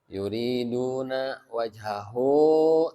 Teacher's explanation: Ini mad silah qasiroh tetap harus dibaca panjang 2 harokat.